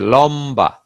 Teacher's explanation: মর সঙ্গে ব ফলা যুক্ত হলে ব উচ্চারণ স্বাভাবিক থাকে